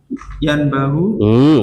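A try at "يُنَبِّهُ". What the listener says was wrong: Itu ada tasdidnya itu. Tasdid Mas. Setelah nun itu kan ba, di atas baknya tasdid. Ikut wazan fa'ala Mas. Fa'ala yufa'ilu.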